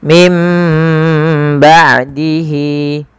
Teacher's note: dibaca dengan huruf mim mim ba sambil ditahan sepanjang dua harakat